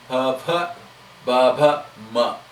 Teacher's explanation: the tongue has very little role. It is only through the lips you pronounce it.